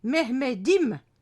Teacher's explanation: C'est ainsi qu'en turc, le D réapparaît si la lettre finale est suivie d'une voyelle qui sonorise à nouveau la consonne. C'est le cas si on veut dire mon Mehmet, c'est Mehmedim avec le suffixe im, mon, qui s'ajoute en fin du mot selon les règles grammaticales de la langue turque.